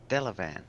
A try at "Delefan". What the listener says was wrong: Delefan. Delefan. Yes, it's actually a PH. It's a PH. Delefan.